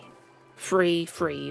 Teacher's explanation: I don't use my tongue for the th sound